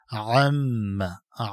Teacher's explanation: عین چې دی دا ادا کېږي د وسط الحلق نه، د مرۍ د منځ نه خاص واضح صفا ادا شي. عم کې میم مشدده دی، قانون په میم مشدده کې دا دی چې په دې کې غنه واجب ده، یعنی په مقدار د یو الف بدل ته وقت تیرې.